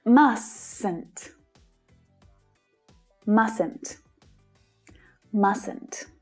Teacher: Notice that the middle T is not pronounced in the negative form.